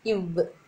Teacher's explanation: இவ் சொல்லி பார்த்தீங்கன்னா தெரியும். இவ் மேல் பல் வந்து கீழ் இதழை தொடுறதுனால இவ்வுன்றது பிறக்குது